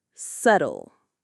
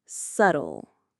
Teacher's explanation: The pronunciation here is a bit tricky because the B is silent.